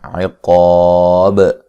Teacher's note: کریں گے، باریک ہو تو الف کو بھی باریک پڑھیں گے، وقف کی صورت میں با پر جو قلقلہ ہے اس کو خوب واضح کریں گے